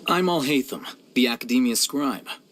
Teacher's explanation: Yeah, so this actually threw me off because I initially put him as having the somewhat low voice, but after speaking with my speech pathologist, I realized, no, it's just that he has an open resonance, but a high pitch